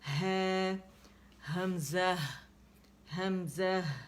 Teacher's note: حمزہ ہا دونوں اقص الحلق کے لیٹرز ہیں